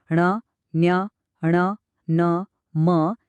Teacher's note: आता काही व्यंजन अशी आहेत ज्यांच्या उच्चारात नाकाचा वापर होतो म्हणजे हवा तोंडासोबत नाकातूनही बाहेर येते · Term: अनुनासिक